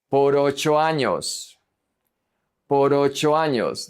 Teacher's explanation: And then the O is going to connect to the A.